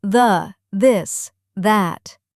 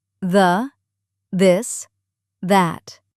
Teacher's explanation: For both of them, your tongue needs to come forward, just a little bit between your teeth. Not sticking way out, just the tip touching your top teeth. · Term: hard one